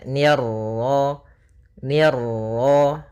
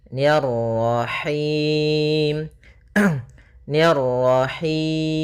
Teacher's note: Ma ada bacaan Mad thabii'i yaitu fathah bertemu Alif ni tipis ketemu ro yang ro tafkhim ro tebal